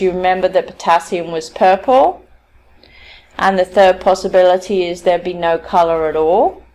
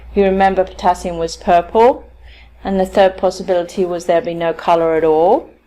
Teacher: using the rising tone, asks for some kind of feedback